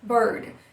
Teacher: É o som A, que é muito igual ao schwa, só que em posição forte, e ele só aparece junto com o R.